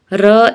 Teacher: र लुंठित है, जिसके उच्चारण में जीभ तालु से लुढ़क कर स्पर्श करे